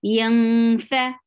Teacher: You are hiding the sound of noon, and you're going towards the makhraj of fa. Yang fa is short. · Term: ikhfa